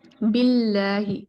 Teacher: اور اگر اس لام سے پہلے آپ کو زیر جس کو ہم کسرہ بھی کہتے ہیں, اگر آپ کو زیر نظر آ جائے اسلام سے پہلے تو اس کا مطلب ہے کہ اس کو باریک ادا کیا جائے گا, اس کو پر نہیں پڑھا جائے گا